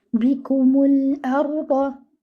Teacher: The ra should be given moderate timing. Do not bounce it and make it heavy. Your dad over here should be given 1 count and it should be heavy from its makhraj.